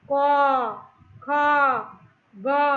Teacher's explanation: এই সমস্ত ব্যঞ্জন বর্ণগুলো উচ্চারণ করতে গেলেই আমার স্বরধ্বনি অ সাথে আসবেই